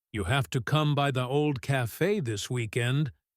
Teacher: has a fairly normal falling pattern because it's a statement, almost like a gentle order wrapped in friendliness.